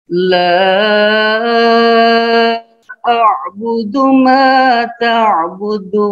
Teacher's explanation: La dibaca panjang juga, 5 ketukan